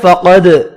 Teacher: حکمت فقد قاف پر پڑھیں گے. دال ساکن پر قلقلہ کرنا ہے